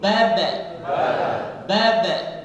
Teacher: Ketika bilang baba itu ada pantulan disebut dengan qalqalah.